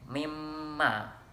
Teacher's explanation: Apabila suatu nun mati ataupun tanwin bertemu dengan huruf mim, waw, ya, dan nun, maka akan terdengar seperti melebur dan didengungkan satu harokat, ditasdidkan. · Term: Idgham bi gunnah